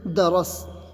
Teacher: یہ تو ہم نے ملانے کی صورت پڑھا، لیکن اگر ہم کو اس پر رکنا ہے تو ہم درسا کہہ کے نہیں رکیں گے، بلکہ درس کہہ کے رکیں گے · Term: ساکن